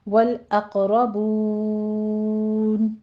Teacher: والاقربون میں قوف بھی پر پڑھا جائے گا اور قوف کے اوپر قلقلہ کریں گے اور را بھی پر پڑھی جائے گی۔ آگے بون، یہاں پہ ہم نے اگر وقف کرنا ہے، والاقربون 6 کاؤنٹ کریں گے، مدارس وقفی پیدا ہوگی۔